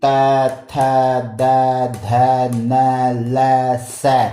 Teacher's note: ये दंतों से बोले जाते हैं तो इनको कहते हैं दंत्य